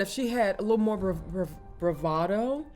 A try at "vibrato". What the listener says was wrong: Vibrato with a V. V. Bravado is a very different thing.